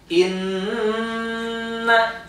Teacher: Jadi sampai terasa ke hidung berarti itu sudah masuk ke al-khoisum makhrajnya, maka sudah betul. Tapi kalau misalkan sekedar inna gitu saja, nah itu belum tepat ya. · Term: gunah